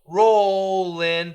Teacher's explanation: Roll in, the L can link.